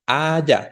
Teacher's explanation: Haya, la sílaba tónica es la primera